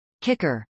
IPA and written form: kˈɪkɚ (kicker)